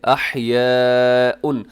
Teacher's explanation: یہ بڑی مد ہے جسے مد متصل کہا جاتا ہے، حروف مدہ حمزہ ایک لفظ میں